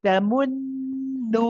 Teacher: The thing about blocking your nose here though is if you've got to block it at the right time, because when you say mun, the first part, you are going to have the gunna, so you can't block it for that part.